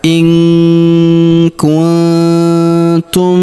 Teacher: Perhatikan nun sukun bertemu huruf tu, maka kita dengungkan dan kita samarkan.